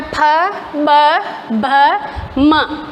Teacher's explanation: अब है ओष्ठ्य, होठों से जब होठ आपस में चिपकते हैं इसको द्विओष्ठ्य भी कहते हैं।